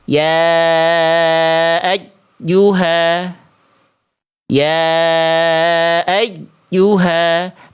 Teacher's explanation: Nabernya berlebihan sehingga membuat bunyi ya tasydidnya terputus.